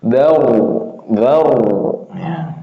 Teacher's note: A'adhar nih tebal, dharu ya. Diangkat pangkal lidahnya biar kelihatan atau bunyi huruf ro-nya itu tafkhimnya ada diangkat ya.